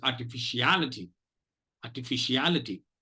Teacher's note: it has 7 syllables and it has 2 syllables which take the secondary stress · There are two secondary stress syllables, are and fish